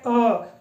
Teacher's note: अ के उच्चारण में जीभ की स्थिति सामान्य रहती है जीभ ऊपर की ओर नहीं उठती है